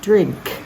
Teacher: I want to hear the K at the end it's not held back like in pop drink is it different to you to your ear can you